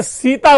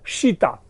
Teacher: लेकिन उनके जितने भी संवाद हैं, उन सारे संवाद में जहां जहां स शब्द आता है उसको वो श बोलता है। अगर सीता बोलना होगा तो वो बोलेगा शीता। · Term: स का श में कन्वर्जन